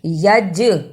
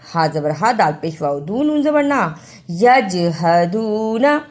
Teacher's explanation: جیم جزم کی صورت میں حرف قلقلہ ہے